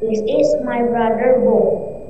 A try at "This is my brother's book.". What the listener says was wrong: S-nya harus dibaca dong. Ulang. Can you repeat? Jangan lupa setelah brother itu kan apostrofi S, itu harus dibaca. Karena kalau enggak, orang enggak ngerti itu kepemilikan atau bukan.